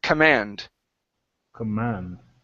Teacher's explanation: this word is pronounced command with the stress at the very end instead of command it's command command there you go good um